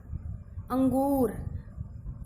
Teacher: अनुस्वार की जो आवाज़ है वो नाक में से आती है।